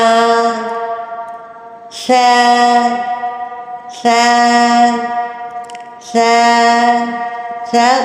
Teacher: سا سا سا سا، باریک ادا ہوگا، اس میں سیٹی نہیں آئے گی